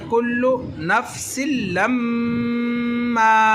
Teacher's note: मीम को लंबा हमने किया, लाम और मीम की आवाज़ को जोड़कर गुन्ना किया, वो इसलिए जब भी नून के मीम के ऊपर शद आ जाए तो नाक में आवाज़ ले जाकर गुन्ना करते हैं।